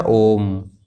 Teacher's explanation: फिर आपको तीसरा है इसके अंतर्गत प्लुत। प्लुत स्वर होता है जिनके उच्चारण में 3 मात्राओं के समान समय लगता है